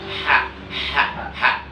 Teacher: Nah, ha kecil itu adanya di tengah tenggorokan.